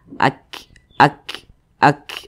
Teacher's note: jadi ada hembusan angin yang mengalir, yang keluar daripada mulut kita. Jadi cara membunyikannya itu ak. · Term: sifat huruf hamas